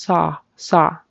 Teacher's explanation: When I saw, it kind of went into a saw, saw, saw. It needs to be just saw, saw, just straight open, tall, saw, saw.